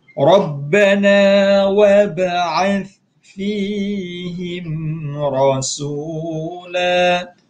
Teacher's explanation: Kita berhenti dekat rasulan, kita berhenti rasula panjang dua harakat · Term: mad iwad